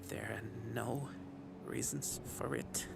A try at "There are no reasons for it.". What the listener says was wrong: A lot of emphasis with the t.